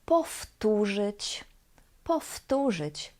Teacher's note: Here the W, the V sound, changes to its voiceless equivalent, which is F. Powtórzyć, because of voiceless T that is afterwards.